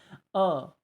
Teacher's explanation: मध्य स्वर हिंदी में अ स्वर केंद्रीय स्वर है यानी कि इसमें अ जो हम बोलते हैं ये जीभ के